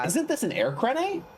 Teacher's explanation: That rising tone at the end as if it's a question